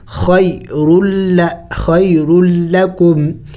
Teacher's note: یا ساکن سے پہلے زبر ہے، حروف لین ہے، تو اس کو جلد پڑھیں گے